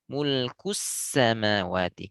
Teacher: Sin sukun di sini harus lebih panjang daripada lam. Jangan lahu mulkus sama, kusama terlalu cepat.